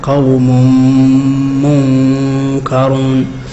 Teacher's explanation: الإضغام وقع في السلام قوم منكرون قوم منكرون التنوين قبل الميم حكم الإضغام مع غنى